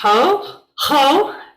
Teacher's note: you gotta put a little rough sound of the air on it so this makes a hoe sound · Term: rough breathing sound